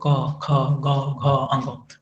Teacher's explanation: कंठ व्यंजन कौन कौन सा होता है, तो उच्चारण इनका कंठ की सहायता से होता है, ठीक है, जैसे क ख ग घ अंग, तो जितने भी कवर्ग हैं, क से कवर्ग, क से कंठ, तो जितना भी कवर्ग है ना, कवर्ग का उच्चारण आपका कंठ से होगा